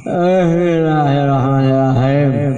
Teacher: mim eta ayana di antara bibir atas bibir bawah di tengah-tengah otomatis cara pengucapan anak kedah di itu tutup Jadi panggil orang mangap di sela-sela eta aya makhraj mim waw sareng ba.